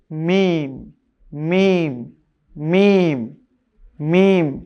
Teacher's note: জায়গা না ভেজা জায়গা থেকে বা খেয়াল করুন কেমন এরপরে হচ্ছে দুই ঠোটের শুকন জায়গা থেকে উচ্চারণ হবে · দুই ঠোঁটের শুকনো জায়গা থেকে উচ্চারণ হবে মিম।